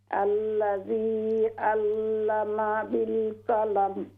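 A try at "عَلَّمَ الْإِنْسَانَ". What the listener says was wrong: عین درست کیجیے. علم الانسان.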